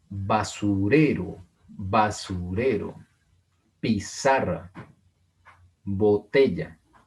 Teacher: Vean que el acento está, la sílaba tónica, en la penúltima sílaba. · Porque tienen el acento en la penúltima sílaba. No en la última, no en la antepenúltima, en la penúltima sílaba. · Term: palabras graves